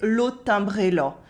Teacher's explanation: The nasals are a bit more nasal than they could be with me, for example, and the A sounds more like an O. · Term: accent of rural Eastern France